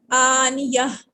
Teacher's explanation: آنیہ تن، وقفن آنیہ، گول تا کو وقفن میں ہم ہا میں بدل دیتے ہیں۔